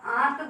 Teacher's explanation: pronunciation आपका जो है नाक से ही हो रहा है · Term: चंद्र बिंदी